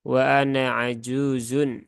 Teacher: nunnya dibaca pendek ya tidak dibaca panjang tidak dibaca panjang bedanya kalau tadi di sini ya Di ayat